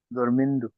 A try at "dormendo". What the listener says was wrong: dormindo না, এটা হবে dormendo। কারণ হচ্ছে আরে দিয়ে শেষ হলে হচ্ছে আন্দ, আর এরে এবং ইরে দিয়ে শেষ হলে হয়ে যাবে এন্দ।